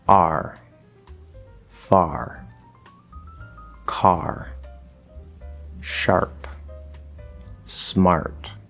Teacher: This is actually an R-colored ah. Okay, 5th vowel R-colored.